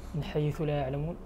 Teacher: النون الساكنة قبل الحاء حكم الإظهار